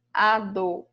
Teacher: sílaba tônica na penúltima sílaba, a palavrinha é paroxítona